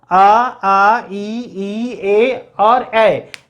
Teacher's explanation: आपका मुख गोल नहीं हो रहा, होठ में कोई फर्क नहीं आ रहा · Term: अवृत्त मुखी